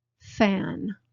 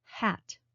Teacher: Could you tell that the consonants F and H have voiceless sounds?